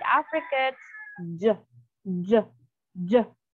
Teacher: So you combine D and G, the result will be the affricate J, J, J. Okay, so there's a stop also and there's a hissing sound. That is affricate.